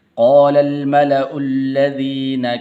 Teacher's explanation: क़ालल लाम को आगे लाम के साथ मिलाना है